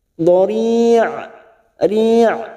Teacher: Ujungnya ada huruf ain yang memiliki sifat tawasud, ya, jangan samakan dengan hamzah.